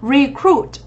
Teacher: Từ này theo đúng quy tắc động từ trọng âm dẫn tới thứ hai. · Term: trọng âm 2